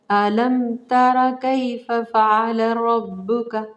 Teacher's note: मैंने होठों को बंद किया है, ना खफा किया है, ना इदगाम किया है, बल्कि सादा पढ़ा है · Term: इजहार करना